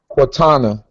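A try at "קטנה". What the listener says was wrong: Wouldn't be Quatana in this sense. It would be Quatona. Close enough.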